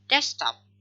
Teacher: The k is dropped. The k is elided. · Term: cluster reduction